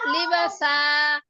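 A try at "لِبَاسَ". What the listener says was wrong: না বাই টান নেই আপু, একটা টান দিচ্ছেন যে জবরের পরে খালি আলিফ আছে না, দুইটা টান হবে একসঙ্গে। লিবাসা লিবাসা।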